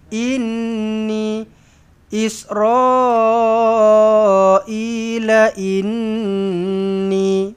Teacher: nun sabdu dengungkan wajibul ghunah dua harakat